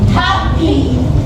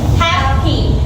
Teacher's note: the first syllable is stressed, meaning we say it's stronger, and the second syllable in unstressed, so it's softer.